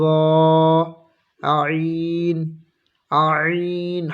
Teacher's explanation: হলকের মাঝখান থেকে উচ্চারণ হবে